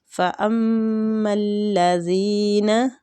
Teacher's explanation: میم مشدد ہے، اس پہ غنہ کرنا ہے، زال نرمی والا حروف ہے، زبان کی ٹپ تھوڑی سی باہر کو آئے گی، زینہ کھینچیں گے، یا مد بھی ہو رہا ہے، ٹھیک۔